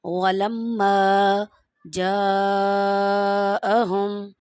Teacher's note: یہ مد ہے اور اس کو 5 الف کے برابر آپ نے کھینچنا ہے